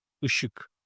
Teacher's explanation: Let's take a look at the last vowel of the word, which is I. Is a back unrounded one here.